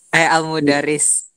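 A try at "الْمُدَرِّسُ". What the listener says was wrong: iya, al-mudarrisu. Dibaca ujungnya ya. Al-mudarrisu.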